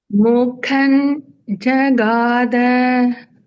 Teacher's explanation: Jagada, all are Alpa Pranas. No Mahaprana there.